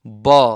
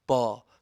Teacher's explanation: यो ब को उच्चारण गर्दाखेरि तपाईहरुको दुईवटा ओठलाई नजोड्दासम्म ब उच्चारणै हुँदैन। एकछिन सासलाई, यो फोक्सोबाट आएको श्वासलाई मुखमा बन्द गर्नुपर्छ, ब।